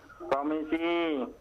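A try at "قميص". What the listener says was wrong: komisi بالصاد. Sadnya diperjelas.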